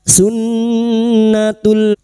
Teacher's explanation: Nun yang bertasdid guna musyaddadah kita dengungkan selama 3 harakat. Sunnatul, lam ta'rif yang bertemu hamzah atau cara mudahnya ciri-ciri lam ta'rif yang bersukun idhar qamariyah.